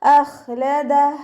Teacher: അപ്പോൾ നമ്മുടെ തൊണ്ടയിൽ നിന്ന് ഹാ സുക്കൂനിൻ്റെ ഒരു സൗണ്ട് നല്ലോണം കേൾക്കാം